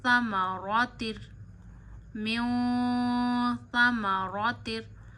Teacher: नून साकिन की आवाज नाक में ले जा के एक उंगली जितनी ठहराते हैं और छुपाते हैं।